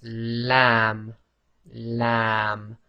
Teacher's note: So a bit more pressure on the front of the tongue. The back of the tongue is as normal, it's not raised.